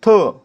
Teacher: थ चा उच्चार ह जोडल्यासारखा होतो म्हणून थ काय झाला महाप्राण